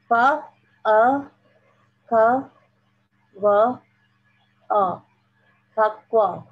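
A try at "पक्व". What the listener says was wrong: It is not pa, it is p. So we have pa. This p, p, p. Pakwa.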